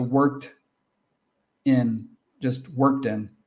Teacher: It sounds like one word. Now it sounds like one 2-syllable word with the stress on work